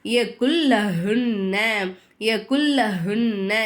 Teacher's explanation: ஒரு எழுத்தை இன்னொரு எழுத்தோட ஜாயின் பண்ணி குன்னா செய்யாம ஓதணும்